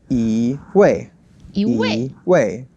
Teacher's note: when the second word is the fourth tone, then the first E becomes the second tone · Second tone and the fourth tone together.